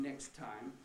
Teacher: i just had the k and the s that was quite enough to be saying before another t